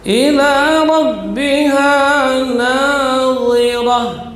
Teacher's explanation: huruf yang keluar di ujung lidah menempel pada ujung gigi seri atas. Walaupun kedua-duanya huruf itbaq, ya, akan tetapi beda makhrajnya. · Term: huruf dha